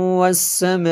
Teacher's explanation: الذی جعل لکم الارض، الذی جعل لکم الارض فراشا والسماء، دیکھیں تنوین کے بعد واو حروف یرملون میں سے یہاں پہ ادغام ہوا۔ آگے سما پہ یہ جو مد ہے یہ مد متصل ہے، کیونکہ حمزہ اسی کلمے میں ہے۔